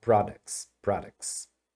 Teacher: tem uma regrinha que desse T que some aí tá que é comum acontecer em algumas palavras no plural